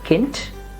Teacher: The first part ends in a D, that sounds like t